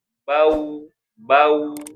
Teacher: Jadi ketika waw sukunnya memang harus dimonyongkan.